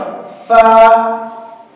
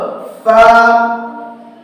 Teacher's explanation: নিচের ঠোঁটের পেট 14 নম্বর মাখরাজ নিচের ঠোঁটের পেট সামনের উপরের দুই দাঁতের আগার সাথে লাগিয়ে উচ্চারিত হয়